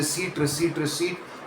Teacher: The P is silent. completely silent receipt, not receipt. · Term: silent P